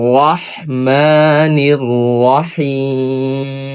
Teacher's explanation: আমাদের সুন্দর করে হা গলার মধ্যখান থেকে উচ্চারণ করতে হবে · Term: ছোট হা